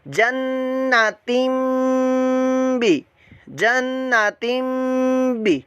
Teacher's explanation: हम तीन नहीं पढ़ेंगे बल्कि तिम पढ़ेंगे, मीम की आवाज़ के अंदर इसको कन्वर्ट कर देंगे। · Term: इकलाब का कायदा